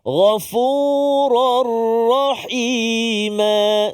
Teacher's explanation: tanwin bertemu dengan ra iaitulah idgham Bila Ghunnah masukkan tanwin ke dalam ro tanpa dengung